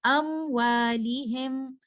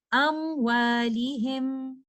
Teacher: میم ساکنہ کا مخرج بھی لپس سے آتا ہے اور واؤ اور فا بھی لپس سے ہی آتے ہیں ، تو ایسی صورت میں ہمیں بہت زیادہ دھیان رکھنا پڑتا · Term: میم ساکنہ کے اظہار